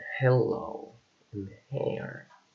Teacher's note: H, which is a voiceless, glottal, and fricative sound